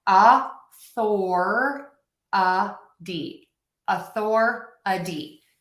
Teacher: think of that T as a super fast D sound